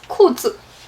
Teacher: So 裤 with the fourth tone, 字 is toneless. There's no tone mark on it.